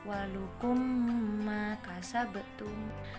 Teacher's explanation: seperti menyuarakan huruf mim rangkap atau ditasydidkan, dan bacaan ini wajib dibaca dengung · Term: idgham mimi